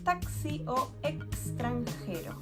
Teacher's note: The letter X is going to sound like two C together or the combination C and S.